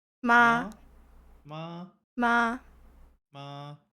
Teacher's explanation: So high and level sound, natural, prolonged.